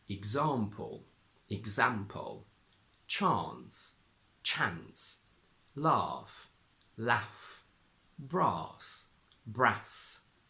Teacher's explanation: Jordie does not have the Trap bath split · Just like Yorkshire, Geordie does not have the trap bath split. In RP, the letter A in these two words gives two different sounds, a short A in trap and a long R in bath.